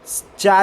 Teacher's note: ये अल्प प्राण है, अघोष है और तालव्य की सहायता से बोला जाता है।